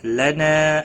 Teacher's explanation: لنا الف مدہ ہے، ایک الف کے برابر کھینچ کر پڑھیں گے